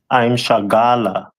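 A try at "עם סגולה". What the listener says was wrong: So that letter, the first letter after I'm is Sa, as opposed to Shah. So I'm Sagala, right?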